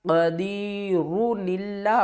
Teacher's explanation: نون کو پڑھیں گے اور اس نون کو ہم لام کے ساتھ ملائیں گے